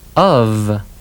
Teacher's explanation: Sometimes F can sound like V, as in of.